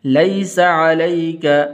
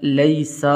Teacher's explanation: لیس یہ یا حروف لین میں سے ہے، اس کو لمبا نہیں کریں گے۔ لیس علیک، لیسا ایسے نہیں پڑھنا، سین کے آگے الف نہیں ہے تو لمبا نہیں کرنا.